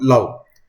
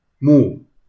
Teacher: love is pronounced with a short U sound, love, while move has a long U sound, move